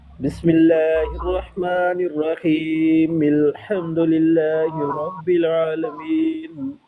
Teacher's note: हमज़ा वसली जो है वो शुरू में तो पढ़ी जाती है लेकिन दरमियान में आ जाए या मिला के जब पढ़ेंगे दो कलमों को तो वो बीच में से गिर जाती है, उसको नहीं पढ़ा जाता।